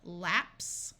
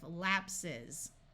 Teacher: Here we have the word lapse, which ends in the unvoiced S sound, but when we make it plural, it takes on the voice sound at the end of lapses. So this S keeps the unvoiced sound of S, and this one takes the Z sound, lapses.